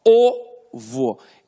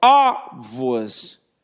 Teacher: O O é um som fechado. E ovos é um som aberto.